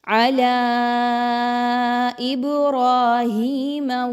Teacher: را زبر الف را پر زبر آگئی تو اس را کو پر پڑھیں گے